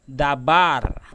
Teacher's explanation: bar juga mendapatkan vokal panjang karena dia mendapatkan tekanan suara